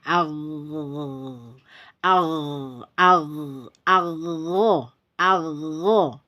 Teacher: mempunyai sifat rihwa atau Roha atau suara mengalir jadi suara harus dialirkan